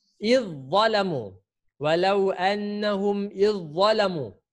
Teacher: Awak masukkan huruf za terus.